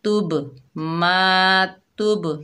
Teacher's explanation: با جو ہے حروف قلقلہ میں سے آ رہا ہے، جنبش پیدا ہوگی اس کو ادا کرتے ہوئے، ٹھیک ہے، ڈبل ساؤنڈ آئے گا۔